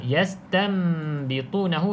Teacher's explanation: pastikan bunyi Nun ni ditukarkan bunyi huruf mim yastambitunahu rapat bibir atas bibir bawah okey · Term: iqlab, iklab